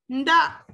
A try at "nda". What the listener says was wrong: Oui, coup de glotte, ne dis pas nda.